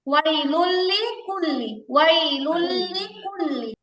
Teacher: এখানে কি কোনো রকম গুন্না হয়েছে? না মিলে পড়ছে ঠিক আছে, কিন্তু কোনো গুন্না হয় নাই। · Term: গুন্না ছাড়া মিলাইতে হবে